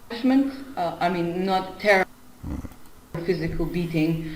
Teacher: Notice the stress on not.